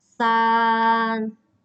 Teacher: San, nada datar ya, first tone.